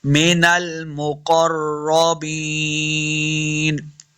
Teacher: या मद्दा है, दो हरकत लम्बा करेंगे, आखिर पे नून को साकिन करना है।